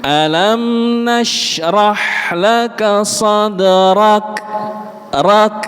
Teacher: Nah, kalau panjenengan bisa Pak Bu, huruf kaf itu punya sifat yang namanya hams. Jadi di akhir ayatnya itu ada bunyi nafas yang keluar. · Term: sifat hams